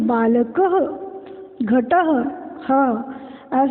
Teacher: ये वर्ण अनुस्वार का उच्चारण नाक से तथा विसर्ग का उच्चारण आधा ह के समान होता है।